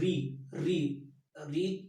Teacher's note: यदि आप री का उच्चारण करेंगे तो री री री जीभ जो है वह ऊपर ताल में टच करके तुरंत जस्ट नीचे आ जा रही है, यानी वह मूर्धा मुख को स्पर्श कर रही है।